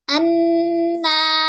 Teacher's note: yang disertai dengan dengungan, ya, pada pangkal hidung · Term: makhraj huruf nun